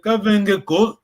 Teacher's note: Il faut vraiment lentement, petit à petit, tu achèves, disons, tu diminues la tonalité.